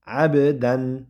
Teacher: ba harfi sukunlik bo'lganida qalqala qilib o'qiymiz